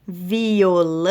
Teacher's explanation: viram que a última sílaba aqui que foi alongada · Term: oxítonas